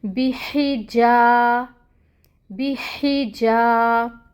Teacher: یہ جو جا ہے یہاں پہ الف مد ہو رہی ہے، 2 کاؤنٹس کے برابر جا کو لمبا کریں گے۔ بیحی جا، بیحی جا، را، را کو پر پڑھیں گے کیونکہ اس کے اوپر فتحہ ہے، 1 کاؤنٹ۔